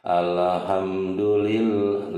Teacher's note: lam jalalah tarqiq Kenapa karena sebelumnya berharokat kasroh ditetapkan tipis